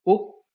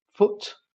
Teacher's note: in foot okay um this vow is a fairly High vow a close vowel produced at the back similar in height to I